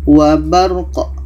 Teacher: Sukun qaf ini mempunyai kaidah qalqalah. Ada pantulan, 'wabarq'. Ah, keduanya sudah dibaca.